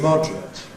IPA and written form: ˈmɒdrət (moderate)